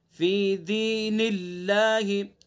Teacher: یہاں چونکہ اللہ کے نام سے پہلے زیر ہے تو اس لیے اس اللہ کے نام کو کیا پڑھیں گے؟ باریک پڑھیں گے